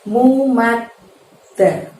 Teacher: Di lafadz mumaddadah itu ada tasydid pada huruf dal, maka mad kita tahan. Kalau ada huruf yang bertasydid, maka bacaannya seolah-olah suaranya ditekan dan ditahan selama 2 ketukan juga ya. Mumadda, baru kemudian da.